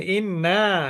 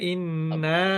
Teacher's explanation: প্রথমটা হচ্ছে ওয়াজিব গুন্না কারণ নুনে মিমে তাসদিদ গুন্না করা ওয়াজিব